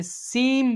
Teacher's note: نون ساکن کو میم سے بدل کر اخفا کریں گے یعنی غنہ کر کے پڑھیں گے. ٹھیک ہے، نون ساکن کو میم سے، سیم پڑھیں گے، سین نہیں پڑھیں گے، سیم میم.